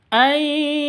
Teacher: Cara bacanya masuk ke ya disertai dengung karena idgham bi gunnah